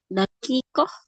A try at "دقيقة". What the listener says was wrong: Bukan, bukan daqiqah, pakai qaf, daqiqah.